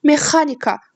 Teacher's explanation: Mexanika sözündə vurğu ikinci hecaya düşür.